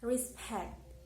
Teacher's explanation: the second syllable is the stress respect because pact is louder higher and a little longer respect